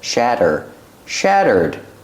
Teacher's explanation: the Double T is pronounced like a fast D